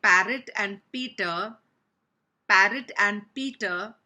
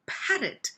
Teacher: with p there's got to be breath coming out so it's got to be parrot